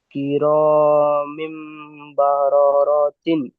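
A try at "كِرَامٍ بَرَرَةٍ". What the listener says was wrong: মাশাআল্লাহ, সুন্দর পড়েছেন।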